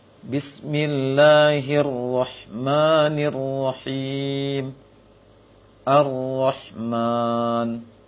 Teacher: Tetapi penamaan takrir di sini untuk memberikan peringatan kepada kaum muslimin dalam mengucapkan ro. Takrir dia getaran ringan pada ujung lisan. Maka ketika mengucapkan ro tidak boleh berlebihan. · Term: sifat takrir